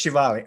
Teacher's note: the stress falls on the last syllable